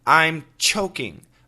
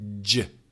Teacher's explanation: CH is an aspirated sound, which means lots of air. Ch. The J is a vibrated sound.